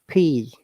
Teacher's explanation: the p phoneme is made through the mouth and it is unvoiced which means that you don't use your vocal chords to make the sound · when you're saying P, our lips are touching, but the air is coming out.